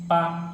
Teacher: अगर मुंह बंद है तो जैसे अगर ओठ दोनों मिला है तो वहाँ पर पा आता है